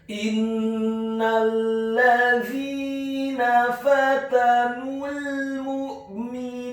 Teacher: Innal ladzina, huruf alifnya dibaca tipis kasrah 1 harokat, huruf nunnya ditasydidkan dengan gunnah atau dengung seperti mat atau panjang 2 harokat. · huruf za-nya dibaca tipis, tarqiq, lidahnya agak keluar sedikit, kasrah 2 harokat karena setelahnya ada huruf ya sukun, dan huruf nunnya dibaca tipis, fathah 1 harokat.